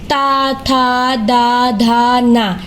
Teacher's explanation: ता थ द धा न ये दांत की दांत की मदद के बोले जाते हैं